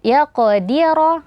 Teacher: rnya juga tebal karena ro berharakat fathah · Nah, kemudian qaf sukun dibaca tebal yaqdira, dan di situ ada qalqalah. Yaqdira, ro-nya juga tebal karena ro berharokat fathah